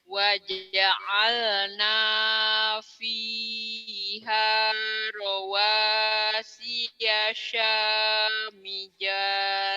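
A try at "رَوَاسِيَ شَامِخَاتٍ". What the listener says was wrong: samija, jangan samija, itu titiknya di atas. Samiho samiho teteh. Karena memang nggak salah, huruf-huruf Quran itu kan banyak yang sama, bedanya cuma titik. Ingatnya tetehnya jim, padahal bukan jim, itu mahkot teteh ya.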